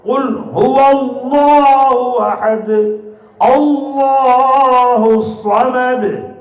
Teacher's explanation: குல்ஹு இருக்கிற லாம் இருக்கே அதை தஹீம் செய்யணும் அதை வல்லினமா ஓதணும்